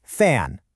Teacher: Your bottom lip is just resting right against your top teeth and the air is pushing through.